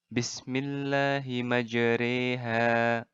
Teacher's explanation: bunyi bacaan baris vattha lebih hampir kepada bunyi baris kasrah jadi bacaannya barisnya Fatah tapi kita mencondongkan nya jadi mirip kasrah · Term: imalah